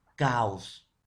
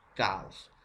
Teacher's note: Es una vocal abierta más una vocal abierta, pero esta se debe separar.